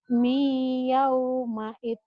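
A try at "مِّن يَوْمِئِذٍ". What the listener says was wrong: Mi bukan mai ya. Mi yaumaiz.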